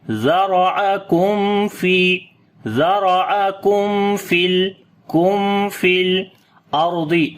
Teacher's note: After the meme, the next letter is fa, we make izhar shafavi, the clear sound of meme, and also we make tawassut quality on the meme